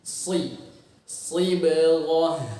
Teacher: dihasilkan dari pangkal lidah yang tadinya menempel dari atas turun terbanting. Jadi bunyi si. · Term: suara khas si